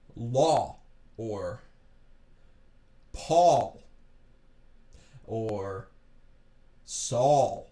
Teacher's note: It's lower and you can feel it in your jaw, so that's why I call it the jaw aw. Kind of drop that jaw aw.